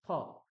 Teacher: ফকারের উচ্চারণ ফ, দুটো ঠোঁট একসঙ্গে করেই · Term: ওষ্ঠ বর্ণ